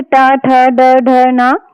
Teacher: ट वर्ग है जैसे ट, ठ, ड, ढ, न इसे मूर्धा से बोला जाता है। ठीक है? ट वर्ग को मूर्धा से।